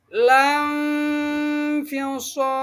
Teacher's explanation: Nah, hilang suara nunnya, samar. Walaupun masih terbaca, cuman samar. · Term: ikhfa hakiki